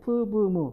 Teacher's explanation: 같은 양 입술에서 소리가 나죠. 그래서 바이레이비얼이라고 이야기를 하는 겁니다. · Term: bilabial sounds